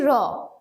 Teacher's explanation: এই র টা হচ্ছে ঘোষ অল্পপ্রাণ ধ্বনি